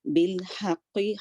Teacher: بالحق، حلق سے نکلے گا، چیسٹ سے نہیں۔ اور قاف ہیوی لیٹر ہے اور لیکن اس کی جو ہے نیچے کسرہ کو باریک کرنا ہے۔